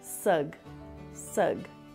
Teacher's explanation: you can hear a bit of a g sound at the end of the first syllable sug sug so put stress on the first syllable suggest suggest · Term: American English